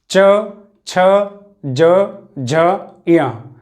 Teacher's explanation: तो इन सभी का उच्चारण हो रहा है हमारा तालव्य से